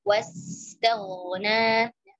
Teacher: ghain sudah tebal kemudian ke nunnya tipis · Wa bakhila wasa tipis, kemudian ke ghainnya tebal, alirkan antara sin sukun dengan ghain sukun, durasinya sama ya karena sama-sama rikh